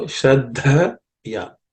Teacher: There are two of them there. The second Dha is aspirated.